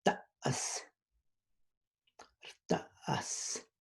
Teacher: So it has this falling tone